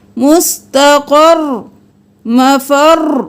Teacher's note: پھر یہاں پر یومئذ المستقر، مستقر، اور یہاں پر رو ساکن ہوگا تو ہم نارمل وقف کریں گے، وَأَخَّرْ، خر خر، رو 1 بار ادا ہوا، اور یہاں پر تشدید والا جب وقف ہوگا تو 2 بار ادا ہوگا